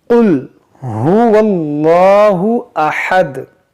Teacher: आपको इसे 'क़ुल' के रूप में पढ़ना चाहिए , जिसमें 'क़ाफ़' का उच्चारण थोड़ा भारी हो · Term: बड़े 'क़ाफ़'